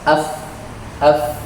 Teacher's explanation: Berikutnya ada fa, ya. Fa ini bibir bawah dengan ujung gigi seri atas.